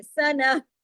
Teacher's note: جب یہ سنہ اگر اس پہ رکتے ہیں تو یہ تا مربوطہ ہاں میں بدل جاتی ہے، ہاں کی آواز آنی چاہیے،